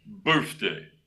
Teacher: Now, there is a deception to that rule, and that is the word birthday. So you got the TH in the middle there, but it makes a F sound.